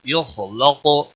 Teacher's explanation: التي یا مدہ ہے، ایک الف کے برابر کھینچ کر پڑھیں گے، لم میم پر اظہار ہوگا، غنہ نہیں ہوگا، یخلق خا حروف مستعلیہ میں سے پور پڑھیں گے، قاف بھی حروف مستعلیہ میں سے، اس کو بھی پور پڑھیں گے